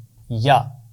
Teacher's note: اس کا مخرج ہے زبان کا درمیان اور اوپر کا تالو